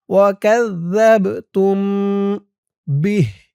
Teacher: এখানে গুন্নাহ হবে, মিম সাকিনে ইকফা